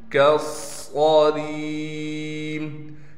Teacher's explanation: اس کاف کے بعد الف بھی ہے اور لام بھی ہے، ان دونوں کو ہم نہیں پڑھیں گے۔ کاف کو ڈائریکٹ صاد سے ملا کر صاد پر تشدید ہونے کی وجہ سے تھوڑا ٹھہراؤ بھی کریں گے اور صاد کو موٹا پڑھنے کے ساتھ صاد میں سٹی بھی ادا کریں گے۔ پھر را کو ہم یا ساکن سے ملا دیں گے اور را کو ایک الف کی مقدار کھینچنے کے ساتھ را کو باریک کر کے پڑھیں گے۔